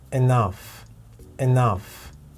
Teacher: the second syllable we have three sounds short ah and now the stress is on the second syllable and you can see it over here by this little apostrophe